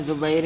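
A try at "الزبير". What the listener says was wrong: زبیر تے الف لام پڑھ یار، دوبارہ سند پڑھے،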